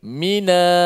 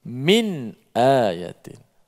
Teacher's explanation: Dia menakalkan, dia menakalkan harakat tu, pindahkan harakat. Asal nun mati, tapi bila temu dengan hamzah dia jadi min a, jadi minayatin. Itu bacaan Imam Warash lah. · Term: pindah harakat